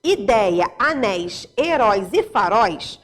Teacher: Nas palavras ideia, anéis, heróis e faróis, o ditongo aberto constitui a sílaba tônica